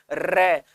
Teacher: रे में जीभ जो है वो कंपन करती है टकरा के, तो इसलिए इसको प्रकंपित व्यंजन बोल दिया।